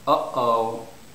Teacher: stress is on the first syllable